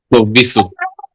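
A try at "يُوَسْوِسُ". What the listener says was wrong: এটা বার মতো কোনোভাবে উচ্চারণ হবে না আব্দুর রহমান ভাই। না বিসু না, ও আল্লাযী ইউয়াস উইসু। ওয়াও উইসু বার মতো হবে না। বিচু হবে না, বিচু বলা যাবে না। উই। জি। না না, সেটা হবে না।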